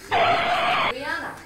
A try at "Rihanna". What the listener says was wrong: But you know the H is silent, right? Silent. So instead of Rihanna, it would be Rihanna.